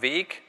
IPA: ve:k